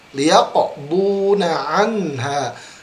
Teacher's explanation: Liyaqo huruf qaf ingat harus memantul.